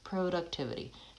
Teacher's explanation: The primary stress is on tiv, that's the longest syllable, productivity, but the first syllable goes back to a pure vowel o because it has secondary stress